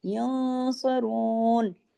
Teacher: वला हुम यंसरून, नून साकिन के बाद स्वाद है तो इख्फा भी मोटा होगा